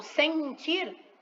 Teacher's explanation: eu escuto o som do e nasal tá ele sai pelo nariz mas eu tenho que colocar o ele para dar essa nasalidade